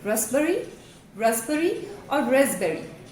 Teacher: The right pronunciation is either raspberry, raspberry or raspberry with a z sound, a slight z sound